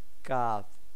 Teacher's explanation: উপরের যে স্থানটা ওইখানে মিলিয়ে আমরা উচ্চারণ করব কাফকে তাই বলেছে জিহেবার গোড়া থেকে একটু আগে বাড়িয়া তার বরাবর উপরের তালুর সঙ্গে লাগাইয়া